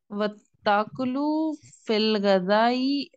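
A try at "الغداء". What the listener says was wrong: This word is not gazai. This is gadai with dal.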